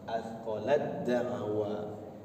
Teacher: Ketika masuk kepada huruf ta, maka huruf ta-nya seakan-akan tidak ada, hilang, karena sudah masuk kepada dal.